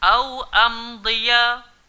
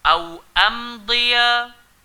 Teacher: kawal pada bunyi huruf hamzah, jangan naik kat hidung. Am, tak nak.